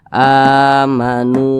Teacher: maka huruf nun ini dibaca panjang karena dia berbaris damah dan posisinya tepat berada di belakang huruf wa sukun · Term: Mad Thobi'i